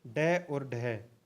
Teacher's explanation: ड और ढ यह मूर्धन्य व्यंजन के अंतर्गत आते हैं